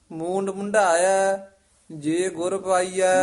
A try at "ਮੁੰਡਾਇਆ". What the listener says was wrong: ਮੁੰਡਾਇਆ ਨਹੀਂ, ਢੱਡਾ ਨਹੀਂ ਹੈ। ਮੂੰਡ ਮੁੰਡਾਇਆ, ਉੱਤੇ ਟਿੱਪੀ ਵੀ ਹੈ ਨਾ। ਮੁੰਡਾਇਆ ਕਹਿ ਦਾਂਗੇ ਤਾਂ ਪੂਲਾ ਬੋਲਿਆ ਜਾਏਗਾ। ਜੇ ਉੱਤੇ ਟਿੱਪੀ ਹੈ ਮੁੰਡਾਇਆ। ਮੂੰਡ ਮੁੰਡਾਇਆ ਜੇ ਗੁਰ ਪਾਈਐ। ਢੱਡਾ ਨਿਕਲਦਾ। ਮੁੰਡਾਇਆ, ਢਾਇਆ ਬੋਲਦਾ ਨਾ। ਮੁੰਡਾਇਆ।